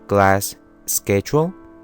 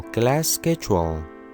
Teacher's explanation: Por ejemplo, si tenemos una palabra que termina con una consonante y la siguiente palabra que tenemos empieza con la misma consonante, como es el caso de class y schedule, lo único que vamos a hacer es que en vez de hacer una pausa entre las palabras, como class, schedule, simplemente vamos a alargar el sonido de la última consonante. Entonces quedaría como class schedule. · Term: link sounds